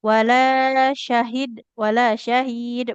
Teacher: Kemudian wala syahid shinnya wala syahid wala syahid bukan wala syahid ya. Jadi yang panjang bukan shinnya tapi huruf ha dan huruf lamnya.